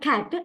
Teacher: in the word cat, it is the low front unrounded vowel.